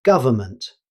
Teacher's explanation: Although it's spelled government, many native speakers say government, dropping the N sound in the middle